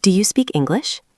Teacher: Your voice goes up at the end, like you're asking something. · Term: rising intonation